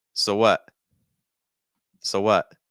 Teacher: so what we have the o sound followed by a schwa